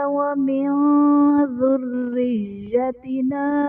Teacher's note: نون ساکن کے بعد حروف اخفا میں سے ذال آ رہا ہے تو یہاں پر اخفا کا قاعدہ ہوگا، یعنی نون ساکن میں ہم غنہ کر کے پڑھیں گے